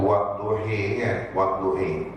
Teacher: Ha tu dibaca dengan imalah.